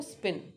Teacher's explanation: तो स्पिन में अनएस्पिरेटेड है क्योंकि उसमें एयर फिल नहीं हुई माउथ में